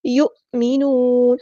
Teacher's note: حمزہ ساکن ہے تو اس کو جھٹکا دیں گے